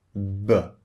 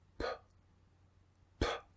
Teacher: So one is voiced and the other is unvoiced.